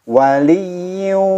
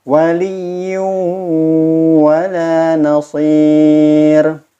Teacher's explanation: Waliyyin, tanwin bertemu dengan waw, bukan hanya sekedar memasukkan tanwin kepada huruf waw, tetapi ada suara dengungnya.